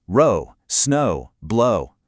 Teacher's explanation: that OW ending keeps that smooth, long O sound going incredibly strong